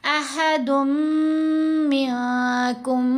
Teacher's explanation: नून की आवाज़ मीम के अंदर ही मुदगम हो गई, मिक्स हो गई। अहदुन में जो नून की आवाज़ है वो नहीं सुनाई देनी चाहिए, वो मीम के अंदर ही मर्ज हो जाएगी, साथ गुन्ना होगा अहदुम मिनकुम।